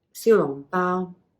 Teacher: This is the mid-rising xiu, down low long, high tone bao.